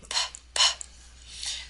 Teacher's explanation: I'm sorry in in terms of the um the manner bilabial in terms of the placement right notice how the Two Lips come together p uh and then it's voiceless right P so um if